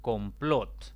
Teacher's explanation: es una palabra de dos sílabas la mayor intensidad cae en la última sílaba por lo tanto como no termina ni en en en yenes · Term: palabras agudas